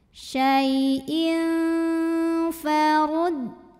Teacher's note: Karena tanwin kasrah menghadapi huruf fa, maka tanwin kasrah ini dibunyikan samar-samar. Kita siap-siap menuju fa disertai bunyi dengung. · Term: ikhfa